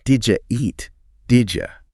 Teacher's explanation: that eed sound at the end of did and the I sound at the beginning of you, they kind of merge. And it sounds like, Did ya eat? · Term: assimilation